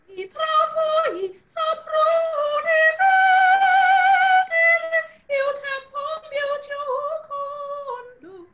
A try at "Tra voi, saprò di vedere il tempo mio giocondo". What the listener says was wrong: Now, you are singing too light. It's nya, nya, nya, nya. No, it's not meaning of pressure. It's not a thing of pressure. It's how you think on your voice. It's not pressure.